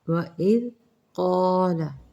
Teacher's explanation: ذال کو نرم پڑھیں گے، قاف مستعلیہ ہے موٹا پڑھیں گے